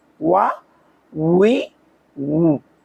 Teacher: ওয়াও দুই ঠোঁটের মাঝখানের ফাঁক থেকে পড়তে হয়।